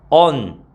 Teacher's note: 얹다 같은 경우에도 지읒이 탈락해서 언, 니은으로 발음이 되죠